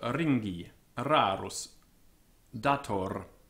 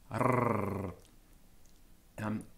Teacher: trilled R, as in French or Scotch, more strongly trilled than in English opera and herring